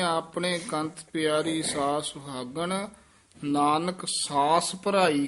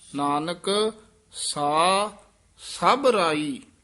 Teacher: ਸਾ ਪਦ ਤੇ ਵੀ ਠਹਿਰਾ ਦੇ ਕੇ ਬੋਲਣਾ ਹੈ ਸ ਨਾਲ ਨਹੀਂ ਜੋੜ ਦੇਣਾ ਸਾਸ ਨਹੀਂ ਕਹਿ ਦੇਣਾ ਨਾਨਕ ਸਾ ਸਭ ਰਾਈ ਇਹ ਸਭਰਾਈ ਜਿਹੜਾ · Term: ਵਿਸਰਾਮ